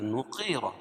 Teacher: قاف کو موٹا اور را کو پر پڑھیں گے کیونکہ را کے اوپر زبر ہے